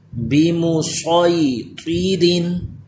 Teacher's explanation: Next جو ہے اس میں صاد پڑھیں گے، سین کا نام نہیں لیں گے. بمصیطرین، صاد بھی پر ہو طا بھی پر.